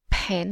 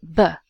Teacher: as in pen and that's unvoiced and we add the voice and it becomes ba